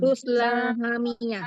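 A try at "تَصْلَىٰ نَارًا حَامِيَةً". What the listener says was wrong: Jangan tusla, tapi ta,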